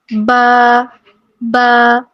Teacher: با ادا ہوگا جب ہمارے ہونٹوں کے جو گیلے حصے آپس میں ملیں گے